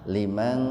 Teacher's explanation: Jadi nunnya dibaca betul-betul samar. Tahan dua ketukan. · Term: ikhfa hakiki